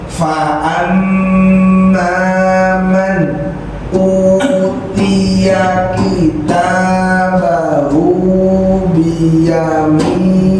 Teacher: Di sini banyak yang kebablasan bacanya, bukan utia, ianya harus pendek